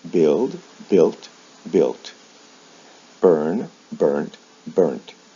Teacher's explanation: a final T is added, or the final sound is changed from a D to a T. The original vowel sound doesn't change.